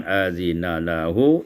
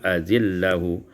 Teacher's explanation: idghamun nun fil lam, diidghamkan nun pada lam